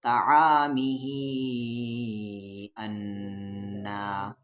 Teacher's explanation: مد کے سمبل کے بعد یہاں حمزہ ہے تو اس مد کو 3 سے 4 الف کے برابر پڑھیں گے،